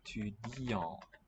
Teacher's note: So the T is dropped, this final one. N is not heard as a N.